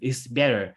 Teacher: it is reduced to tap sound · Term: alveolar flap